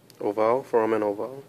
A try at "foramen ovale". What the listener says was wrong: Yeah, pronounce the E. foramen ovale.